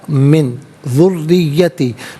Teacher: من میں نون ساکن ہے، اس کے بعد ذال آ رہا ہے حرف اخفا، تو نون ساکن کو اخفا کے ساتھ پڑھیں گے۔ اخفا کہتے ہیں ناک میں آواز لے جا کر گنگنانا۔